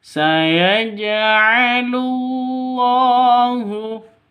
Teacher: Maka ini kalau di tengah seperti ini namanya qalqalah sughra, lebih rendah ya pantulannya ketimbang qalqalah kubra.